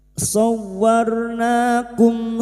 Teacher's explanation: Hanya masuk tanpa ditahan lama-lama hanya masuk shawarna. Sowarnakum ro sukun yang didahului fathah kita baca tafkim